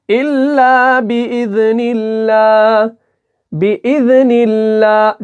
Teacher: नून के नीचे यहां पर जेर आई और उसके बाद अल्लाह का नाम आया, तो अल्लाह के नाम को कैसे पढ़ेंगे? बारीक पढ़ेंगे